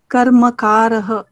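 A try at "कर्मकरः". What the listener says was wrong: samyak.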